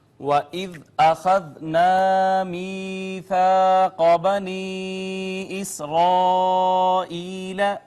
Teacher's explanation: یہاں پہ آپ ناظرین دیکھیں، واو کو ہم نے ہمیشہ پڑھتے ہیں کہ ہونٹ گول کر کے ادا کریں گے، ذال کو نرمی سے پڑھیں گے، اس کے بعد الف مدہ ہے، یا کا ما قبل مکسور یا مدہ، الف کا ما قبل مفتوح الف مدہ، قاف حروف مستعلیہ میں سے اس کو ذرا پر کر کے پڑھیں گے